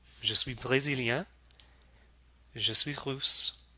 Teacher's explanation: if the silent S in suis is followed by a consonant, you don't pronounce the S at all.